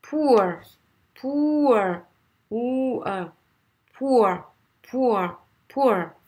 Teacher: ça sera un OU et ensuite un E. C'est pas O, c'est OU et E.